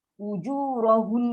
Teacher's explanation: Dengung yang paling panjang. Ataupun kita kata dengung dua hakat.